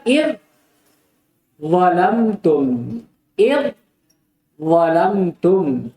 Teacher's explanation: Zal dengan dha, dia sejenis, maka wajib diidgham. Yang menjadi syahid dan inti pembahasan zal, yang menjadi huruf yang pertama dia disukun, dan dha yang menjadi huruf yang kedua dia diharakati. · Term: idgham shaghir